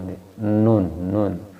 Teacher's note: Dan juga nanti nun ini masuk juga huruf al-khayshum atau gunah ya. Tepat keluarnya di hidung.